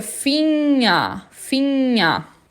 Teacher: O G depois do N eu não falo, então fica Finger, Finger.